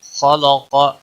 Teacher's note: خا اور قاف دونوں حروف مستعلیہ میں سے ہے، پور پڑے جائیں گے